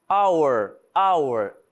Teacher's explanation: repare que eu não tô pronunciando o H.